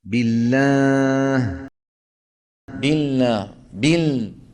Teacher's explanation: هذا من الأخطاء عند نطق اللام. خلط صوتها بشيء من الغنة